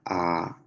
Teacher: ahora la a es una vocal baja